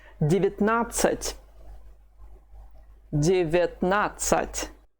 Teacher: Both the first and the second vowels, ye and ya, have been reduced. It's the phonetical law, and you say them both as I.